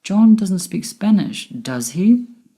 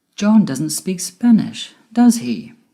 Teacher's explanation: if the intonation of the question tag goes down it means you're checking or confirming information that we are sure of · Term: falling intonation